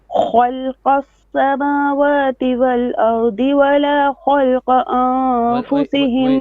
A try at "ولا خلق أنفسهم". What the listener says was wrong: Wait. ولا خ, but the lam will be flat. ولا خلق. So only kha and qa is heavy. So start again.